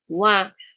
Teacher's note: Wawu pakai satu bibir nggak bisa. Dia makhrajnya dua bibir.